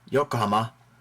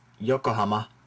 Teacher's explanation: pretty much all the same stress throughout on all the syllables